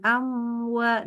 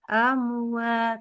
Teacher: Jadi pastikan masuk ke dalam hidung. Mim sukun ketemu wawu tidak boleh ketahan. Maksudnya jangan Jangan agak manjang sedikit gitu.